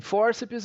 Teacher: a penúltima sílaba é acentuada